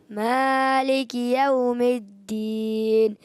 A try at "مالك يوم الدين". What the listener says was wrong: اچھا تھوڑا سا مالک یوم، تھوڑا جھٹکا سا محسوس ہوا، سختی جیسا. مالک یوم الدین، حرف لین جو ہوتا ہے نا نرمی سے پڑھتے ہیں. مالک یوم الدین.